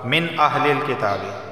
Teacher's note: نون ساکن کے بعد حمزہ آیا ہے اور حمزہ حروف حلقی میں سے ہے تو صرف اظہار ہوگا